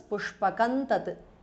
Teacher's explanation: Pushpakam ends in anuswara followed by ta. So it becomes pushpakan tat because of sandhi.